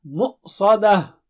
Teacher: مؤ جھٹکا آنا چاہیے وہاں پر حمزہ کا